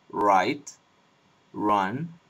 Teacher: We have an alveolar approximant. This is the R sound in American English, like right, run, R, etc.